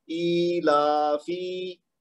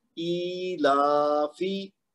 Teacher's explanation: تو فا کو لمبا نہیں کرنا. کیوں؟ کیونکہ فا کے نیچے صرف زیر ہے تو اس کو 1 حرکت دینی ہے